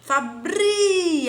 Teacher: ai não é a última se fosse a última hora oxítona a sílaba tônica é a penúltima então aqui é um exemplo de paroxítona